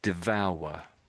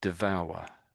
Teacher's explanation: I can sort of hear a W sound in there.